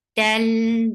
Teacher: Idgham without gunna, so the sound shouldn't go in your nose.